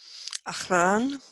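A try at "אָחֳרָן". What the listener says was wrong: but that has an O in that syllable, so it's Achoran.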